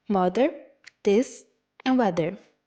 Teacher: a fricative, dental, and voiced sound